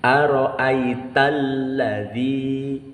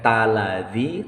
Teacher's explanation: maka dibaca bukan aro'aita ladzi, tetapi aro'aital ladzi, bukan taladzi tetapi talladzi. Jadi seolah-olah ada dua huruf L dalam pengucapannya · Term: tasydid